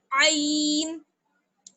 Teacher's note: حلق کے بیچ میں زور پڑنا چاہیے تھوڑا سا جب ہم وہاں سے اس کو نکال رہے ہیں، عین کو نکال رہے ہیں.